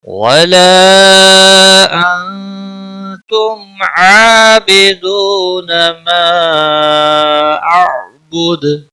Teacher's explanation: ولا مد منفصل ہے، تین الف کے برابر کھینچ کر پڑھیں گے